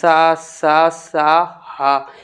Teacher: इनका आप उच्चारण करोगे तो इनका उच्चारण भी लंबा जाता है, प्राण वायु अधिक निकलती है। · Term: ऊष्म व्यंजन